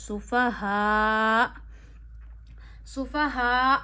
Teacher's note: सुफाहा में आपने हमजा साकिन को एंड पे झटका देना है